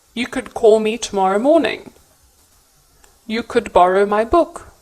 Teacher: as a suggestion also take note of the pronunciation of could you do not pronounce the letter L in the word could